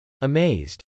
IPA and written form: əmˈeɪzd (amazed)